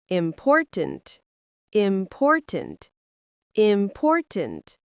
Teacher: For example, the word important. Stress the second syllable. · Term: stress in words